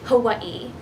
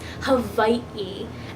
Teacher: So when you see that word Hawaii, there is a little gap between the two I's. So for example, I pronounce Hawaii as Hawaii, but the proper pronunciation of Hawaii is Hawai'i. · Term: glottal stop